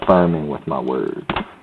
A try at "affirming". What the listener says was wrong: Affirming. You said affirming. Oh, it sounds like firming with my words.